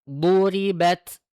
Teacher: ini ketika dodnya sukun jangan sampai dia terhenti suaranya